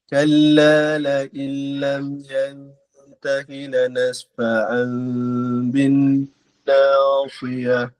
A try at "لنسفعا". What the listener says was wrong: Okay, betulkan sebutan huruf fa. Danasfa'an. Fa.